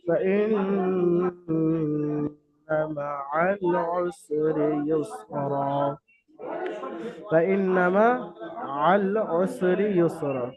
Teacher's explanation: নুন গুণনা হচ্ছে, কিন্তু নুনের উপরে জাবার আছে, হারাকাত, টানা যাবে না। অনেকে গুণনা করতে করতে টান দিয়ে দেয়, ফাইন না এরকম ভাবে টান দিয়ে দেয় ভুলবশত।